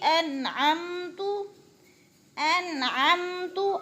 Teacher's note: نعمتی اللتی انعمت، انعمت، ان پہ اظہار ہو رہا ہے، نون ساکن کے بعد عین حروف حلقی میں سے ہے تو اظہار ہے، ادھر غنہ نہیں کریں گے